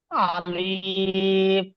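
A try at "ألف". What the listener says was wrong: ভাইজান আমি বলেছি আলিফ টান দেবেন না।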